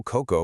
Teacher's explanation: So, coco, pronounced c o k o coco with the stress securely on the first syllable, means coconut